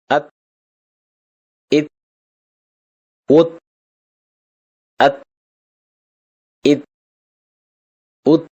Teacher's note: நாவின் நுனி மேல் வரிசை நடுப்பற்களின் ஈரை தொடும்போது ஒலிக்கப் பெறுகிறது.